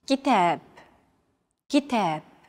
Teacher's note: Notice that the second syllable is stressed. It's pronounced longer and louder, while the first and final syllables are shortened.